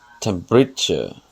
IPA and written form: ˈtɛmprɪtʃə (Temperature)